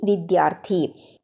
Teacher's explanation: വിദ്യ plus അർത്ഥി വിദ്യാർത്ഥി. विद्या शब्द का अंतिम स्वर आ और दूसरे शब्द अर्थी की प्रथम स्वर ध्वनि आ जब मिलते हैं तो वे मिलकर दीर्घ स्वर आ में बदल जाते हैं